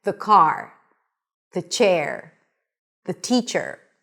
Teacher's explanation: When the following word starts with a consonant - k, p, s, sh, r - then the pronunciation of the word 'the' is going to be with a schwa. A schwa is a reduced vowel - /ə/.